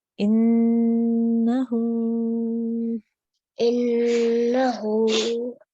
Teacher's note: So we need to take a nice deep breath because we're going to hold on the nasal sound here for 2 seconds, and then we're going to say the ha for 2 seconds as well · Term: noon gunna